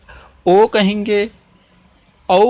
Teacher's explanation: हमारे ओंठ एकदम गोलाकार या वृत्ताकार में हो रहे हैं